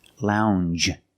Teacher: um Lounge it follows the same pattern as orange and change it's a regular n plus the soft J sound